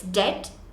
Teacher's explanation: so you don't pronounce the B in debt